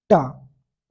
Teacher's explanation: तुम्हारी जीभ है ना वो उल्टी हो जाती है उल्टी होकर ऊपर चिपकती है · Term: मुर्दा